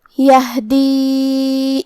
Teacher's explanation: کلمت یہدی میں یہاں حرف الہا ہے اور اس پہ جزم ہے، تو ہم ہا کو حلق کے نیچے والے حصے سے ادا کریں گے، اور جو کہ اس پہ جزم ہے لہذا ہمیں ہا کو ظاہر کرنا ہے.